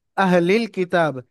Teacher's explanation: সঙ্গে লামের সঙ্গে এই লামটা মিলিয়ে পড়বেন আলিফটা বাদ যাবে খালি আলিফ বাদ যাবে এই লামটা এলামের সঙ্গে মিলিয়ে পড়বেন · আলিফ বাদ যাবে এই লামটা এলামের সঙ্গে মিলিয়ে পড়বেন আহলিল কিতাব এখানে কাফের নিচে জের হারাকাত তাড়াতাড়ি পড়তে হবে টান দেয়া নিষেধ